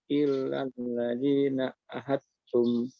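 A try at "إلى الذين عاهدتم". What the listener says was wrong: Ila ya, kalau ini baru ila bukan illa ya. Ilal ladzina ahadtum. Ilal ladzina.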